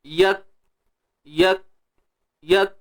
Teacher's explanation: Kemudian bersifat hams. Tertahannya suara, kemudian terlepasnya nafas. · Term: huruf kaf